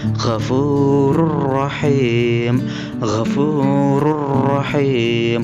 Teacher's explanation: Ghafurur rahim, ra-nya bertanwin dhammah, tanwinnya dimasukkan atau dileburkan ke dalam huruf ra, ra-nya bertasydid, ra yang kedua. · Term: idgham bila gunnah